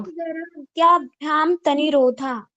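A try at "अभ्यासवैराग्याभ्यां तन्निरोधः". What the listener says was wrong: तन्निरोधः, double ना है, ध्यान दीजिएगा।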